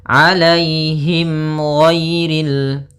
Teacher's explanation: ada mim mati bertemu dengan huruf ghain. Maka dinamakan dengan izhar syafawi. Maka harus jelas suara mimnya.